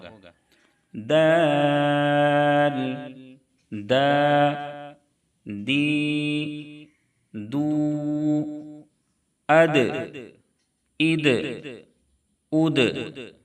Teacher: दाल का मखरज है जुबान की नोक सनाया औलिया की जड़ यानी जुबान की नोक ऊपर के सामने वाले दोनों दांतों की जड़ में लगेंगे और दाल भी हरूफ कलकला में से है इसलिए दाल में भी कलकला होगा दाल दा दी दू अद इद उद इसको अद इद उद इस तरीके से नहीं पढ़ेंगे। · دال کا مخرج ہے زبان کی نوک ثنایا علیہ کی جڑ، یعنی زبان کی نوک اوپر کے سامنے والے دونوں دانتوں کی جڑ میں لگیں گے، اور دال بھی حروف قلقلہ میں سے ہے، اس لیے دال میں بھی قلقلہ ہوگا۔